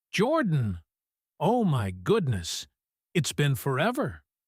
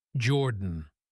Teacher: Oh my goodness, it's been forever." Notice the exclamation in her voice on his name. When we're excited to hear from someone, we often say their name with a quick rise, almost like a small burst of joy escaping before the rest of the sentence even starts.